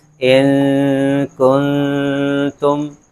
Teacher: اخفا کا مطلب ہوتا ہے چھپانا، جو ہماری نون کی جو آواز ہوتی ہے نا، اس کو ناک میں لے جا کے چھپا دیتے ہیں